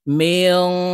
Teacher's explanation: মিম নুন জের মেয়ং, ইকফা গুন্না, নুন সাকিনের পরে ইকফার হরফ শিন আসছে, তাই এই নুনকে নাকের ভিতরে লুকাইয়া গুন্নার সহিত পড়ব।